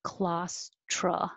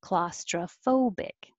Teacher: It doesn't have to be tro because it's not stressed.